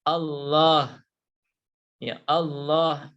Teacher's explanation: lafadz Allah apabila di awal atau huruf sebelumnya berharakat fathah atau dhomah maka lafadz Allah itu dibaca dengan tebal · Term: tafkhim